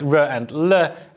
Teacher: we have the sounds ro and le at the alveolar ridge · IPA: ɹ/l